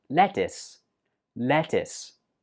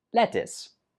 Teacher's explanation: Now, of course, the spelling looks like it should be pronounced lettuce, but actually the last syllable is pronounced is